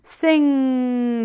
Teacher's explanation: the back of the tongue touches the palate